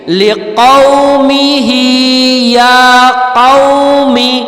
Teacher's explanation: قاف جو ہے وہ حلق سے نکلے گا اور یہ موٹا قاف ہے